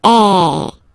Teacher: the sound is really open, and normally your mouth should be opened a little bit more than with the accent aigu as well. Okay, so it goes like A. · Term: accent grave